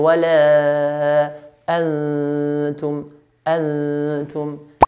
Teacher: Now ta here, which is next to a noon, ta is from the letters of ikhfa, which means to hide. So noon will need to hide onto the ta. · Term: إخفاء